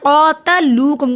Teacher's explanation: फीही वक्फ फीह, फ़अं पे गुन्ना हुआ, आगे हरूफ हल्की नहीं है। क़ातलूकुम, क़ा को लंबा किया क्योंकि खड़ी ज़बर है क़ाफ पे